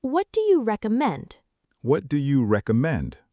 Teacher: The stress is on the second syllable, recommend.